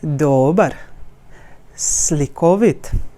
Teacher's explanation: the emphasis is not going sharp on one vowel instead it's going like a wave on all the vowels